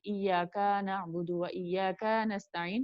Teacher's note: صرف الف ایڈ کیا, آپ دیکھیں کا کے ساتھ صرف الف ایڈ ہوا ہے تھوڑا سا لمبا کرتے ہوئے